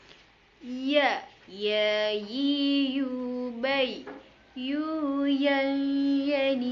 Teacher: huruf ya yang dikeluarkan dengan lisan menyentuh langit-langit bagian tengah